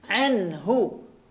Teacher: Pengucapan ain, ya, di tengah tenggorokan, ya, dan pengucapannya jelas. Jangan sampai tertukar dengan huruf hamzah. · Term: huruf ain